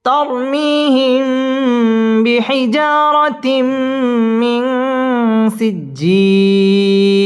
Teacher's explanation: আলিফ টেনে পড়তে হবে তরমিহিম ইকফায়ে শাফাঈ গুন্না করে পড়তে হবে মিম সাকিনের বামে বা আসলে ইকফায়ে শাফাঈ গুন্না করে পড়তে হবে তরমিহিম বিহিজা জিম আলিফ জবর জা মধ্যে তবাই এক আলিফ টেনে